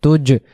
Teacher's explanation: জিম অক্ষর জিহ্বার মাঝখান থেকে শক্ত করে পড়তে হয় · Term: কলকলা